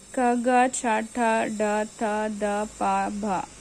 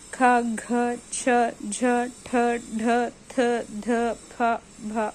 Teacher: ఇవి ఒత్తి పలుకుతాం. సో వీటిని మహాప్రాణాలు లేదా వర్గయుక్కులు అని అంటాం